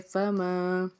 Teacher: آگے میم الف ما ہے، تو الف سے پیچھے زبر ہونے کی وجہ سے ہم نے اس کو ایک الف کے برابر کھینچ کے ادا کرنا ہے